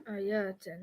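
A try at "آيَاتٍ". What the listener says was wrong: You're making it too long. Is there an alif there? Yatin. Is this a combination? Because the combination needs to be atin. So that's just straight jar. That's just easy jar.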